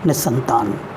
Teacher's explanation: और इसी प्रकार से निह प्लस संतान, न के बाद में विसर्ग है, बाद में भी स, तो विसर्ग स में ही परिवर्तित हुआ है और शब्द बन गया है निसंतान। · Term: दंत स